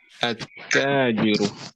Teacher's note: the lam of al will be immersed into ta, and ta will have shadda.